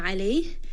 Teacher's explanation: when we have a sukun at the ha, make sure you do give it a little bit of air and hams so that it is not dropped